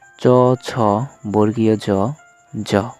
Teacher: জিভের পাতা পশ্চাৎ দন্তমূল তথা অগ্রতালুকে চ্যাপ্টাভাবে স্পর্শ করলে যে ধ্বনিগুলো পাওয়া যায় সেগুলোকে অগ্রতালব্য ধ্বনি বলে